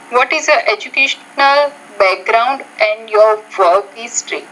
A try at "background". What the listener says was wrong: Notice how you said background, but it's background. So the R sound, you don't have to trill your tongue like you are. You just say background. Not background, but background.